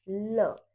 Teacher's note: आपकी जो जीभ है आपकी जो टंग है वो आपके मुंह के ऊपरी हिस्से को छू रही है। उस ध्वनि को हम जो उत्पन्न हो रही है कह रहे हैं यहां पे पार्श्विक ध्वनि।